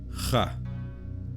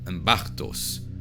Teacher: the letter C in front of T became more of like a German hard CH sound